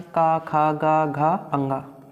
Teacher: का वर्ग के अंतर्गत 5 वर्ण आते हैं, का, खा, गा, घा, अंगा। कहाँ से बोले जाएंगे ये वर्ण, तो कंठ से बोले जाते हैं, जो कि गर्दन का निचला हिस्सा होता है